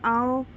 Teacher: जीभ की स्थिति पश्च है, उच्चारण स्थान कंठोष्ठ है, मात्रा दीर्घ है और मुख विवर विवृत है